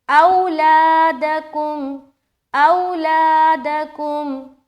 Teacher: او میں واو لین نرمی کے ساتھ جلد ادا کریں گے